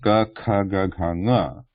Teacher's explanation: the back of the tongue pressing against the back of the throat there, on the back side. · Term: guttural position